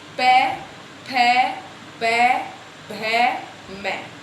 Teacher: ओष्ठ यानी कि होठ। जब हम इन वर्णों का उच्चारण करते हैं तो हमारे दोनों होठ आपस में स्पर्श करते हैं